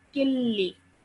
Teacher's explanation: you would not produce a nasal sound in between the kaf and the lam